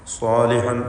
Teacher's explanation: സ്വാദും അതിന്റെ ദീർഘാക്ഷരം അലിഫും തഫ്ഹീം ചെയ്ത് തടിപ്പിച്ച് ഉച്ചരിക്കേണ്ടവയാണ്